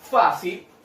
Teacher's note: Fa, si. Ahora tenemos que saber dónde cargo la voz. En este caso sería en la sílaba fa.